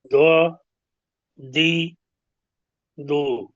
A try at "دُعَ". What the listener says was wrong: جی۔ اب دی پڑھا نا تو دال بن گیا، اگر دوئی پڑھیں گے تو پھر